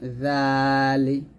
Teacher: সতর্ক থাকবেন সেটা হচ্ছে আপনার জিহ্বাটা যেন নিচে যাতে না লাগে জিহ্বাটা অবশ্যই সবসময় উপরের দাঁতের আগে লাগিয়ে জাল উচ্চারণ করবেন